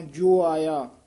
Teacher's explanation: ਜੱਜੇ ਦਾ ਹੂੜਾ ਦੀਰਘ ਲਾ ਕੇ ਉਚਾਰਨ ਕਰਨਾ ਹੈ